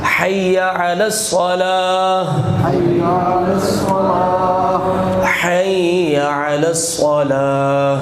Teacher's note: پہلی ہا جو ہے یہ حلق کے درمیان سے نکلے گی، ہا، اور اگلی آخری ہا جو ہے وہ سینے والی ہے، یعنی حلق کے یہ نیچے والے حصے سے۔